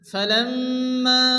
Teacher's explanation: মিমের উপর তাসদীদ, মিম গুণ ওয়াজিব, মা আলিফ মাদ্দা, এই মাদের পরে দ্বিতীয় শুরুতে হামজা মাদ্দে মুনফাসিল।